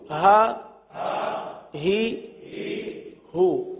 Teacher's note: یہ دو چشمی والا ہا ہے جو کہاں سے ادا ہوتا ہے؟ حلق کے سب سے آخر والے حصے سے